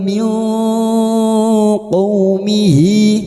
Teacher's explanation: kita samarkan bunyi nun sukun dan mendengung selama 3 harokat. Pada saat menyamarkan bunyi nun sukun dan mendengung selama 3 harokat, kita sambil siap-siap membunyikan huruf qaf. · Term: ikfa hakiki